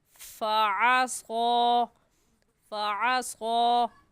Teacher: फ़अस्क़ा, स्वाद हुरूफ़ मुस्तालिया में से है, यानी मोटे हरूफ में से है। तो इस स्वाद को पुर करके पढ़ेंगे, और पुर करने का तरीका कि आपके दोनों होंठ गोल हो जाए।